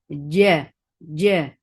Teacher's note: If you let the sound flow or let the breath flow, then there will be ch sound. There should not be any chanak in this jim. No ch sound here. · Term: shidda letter